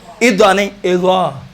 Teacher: بس زال کو آپ موٹا تلفظ کریں گے تو ضین ادا ہوتا ہے، ضا ادا ہوتا ہے.